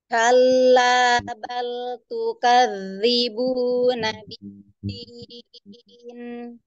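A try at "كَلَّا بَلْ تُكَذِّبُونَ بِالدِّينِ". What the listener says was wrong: Ya, Masya Allah, sudah bagus ya. Lanjut.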